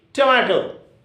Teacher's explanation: your accent should be on the middle syllable